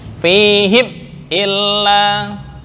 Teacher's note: Fihim enggak boleh dengung ya.